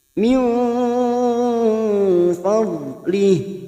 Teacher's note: Min nun sukun bertemu fa ikfa hakiki. Kita samarkan bunyi nun sukun 3 harokat. Ini juga yang disebut dengan ikfa ausat.